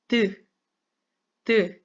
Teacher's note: 혀끝이 잇몸 뒤쪽에 붙지요. 이빨 뒤쪽에 잇몸에 붙지요.